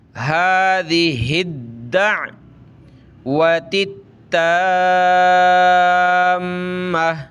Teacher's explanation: ہادی، یہ ہا آگے پلس ہوگا دال کے ساتھ، اور یہ دال پلس ہوگی عین کے ساتھ، ٹھیک ہے؟ دال کو سخت کرنا ہے تشدید کی وجہ سے